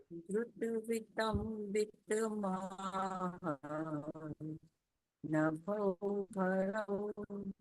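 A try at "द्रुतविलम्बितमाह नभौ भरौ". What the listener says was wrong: हाँ, उच्चारण सही है, लेकिन लय थोड़ी सी गड़बड़ हो गई। क्या हो गया, आपने न भव भरव को ऊपर खींच दिया। वो ऊपर नहीं खींचना है, वो नीचे आएगा।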